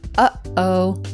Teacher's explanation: This is the noise that's made when you clench your throat to stop a sound from coming out. So it's like the sound in the middle of when you say, uh-oh, for example, you clench your throat to stop that sound. · along the lines of what's called a glottal stop this is the noise that's made when you clench your throat to stop a sound from coming out